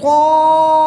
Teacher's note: الف مدہ کے بعد حمزہ اسی کلمے میں ہے تو یہاں پر مد متصل بھی ہوگی. 3 سے 5 الف تک کھینچ کر پڑھیں گے.